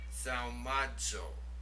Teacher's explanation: Now notice the zeta there. It has the DZ sound to it.